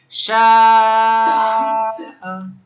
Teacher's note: এই যে আমরা দেখলাম শিম আলিফ জবর শা আলিফ মা এরপরে একই শব্দে হামজা পাইলাম এজন্য একটা মুত্তাসির চার আলিফ টান দিতে হবে চার থেকে পাঁচ আলিফ